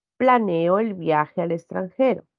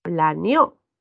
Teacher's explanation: Y al decir planeó, el acento ha cambiado. Fíjense, plané, ahí está la sílaba tónica. Y en el otro caso, está en la última.